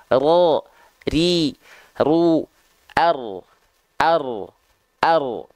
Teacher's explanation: jadi dia getarannya sedikit tapi tetap tegas lugas dan jelas ya walaupun sedikit tapi dia tetap tegas lugas dan jelas nama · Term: takrir